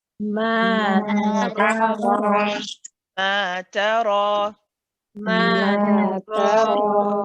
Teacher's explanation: the ra has an alif with it too. So that's going to be 2 counts too.